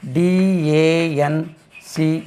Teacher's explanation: Colon எங்கெல்லாம் ஃபோனடிக்ஸில் வருதோ இலாங்கேட்டிங் sound நீட்டணும். இது தமிழில் உள்ள ஆ மாதிரி உச்சரிக்க வேண்டும்.